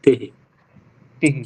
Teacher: ही को खींचना नहीं चाहिए